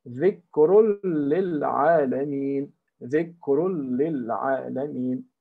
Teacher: we don't hear the na of dhikrun. We say dhikrul lil alameen, and we don't use our nose. We don't use our nose, because nose is a quality of na.